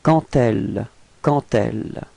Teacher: here the D would be pronounced a bit more like a T. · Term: liaison